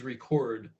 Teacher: if you're putting the emphasis on the second syllable that's the act of recording something like you're recording this video right now so in certain languages